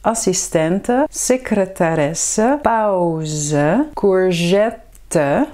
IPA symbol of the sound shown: ə